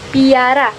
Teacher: bunyi P pada kata piara mengalami palatalisasi